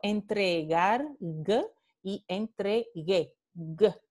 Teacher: La sílaba velar oclusiva sonora, G.